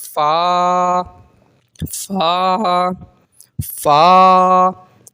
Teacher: ऊपर के दांतों के किनारे से और निचले होठ के तर हिस्से से अदा होता है ऊपर के दांतों का किनारा और निचले होठ का तर हिस्सा · اوپر کے دانتوں کا کنارہ اور نچلے ہونٹ کا تر حصہ. ہونٹ کے نیچے والا تر حصہ، جو اندر ہونٹ آپ دیکھیں گے تو ہونٹ کے نیچے جو تر حصہ ہوتا ہے جہاں تھوڑا سا آپ کو جو ہے وہ فیل ہوگا، تھوڑا سا جو تر ہوتا ہے اندر کا حصہ.